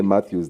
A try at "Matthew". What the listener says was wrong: So, Matthew with one T. No S. It's Matthew.